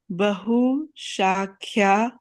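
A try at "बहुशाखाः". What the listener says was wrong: Tell me where is Kya? K-H-A will be what? So it won't be Kya, right? You're putting a Kya because you're reading ahead. The mind goes ahead.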